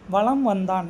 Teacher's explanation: மகர மெய்யெழுத்தை அடுத்து வகரம் வந்தால் சரிங்களா அது அரை மாத்திரையில இருந்து கால் மாத்திரை அளவுக்கு ஒலிக்கும் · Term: மகர குறுக்கம்